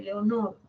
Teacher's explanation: Son media anterior, media posterior, son medias sus vocales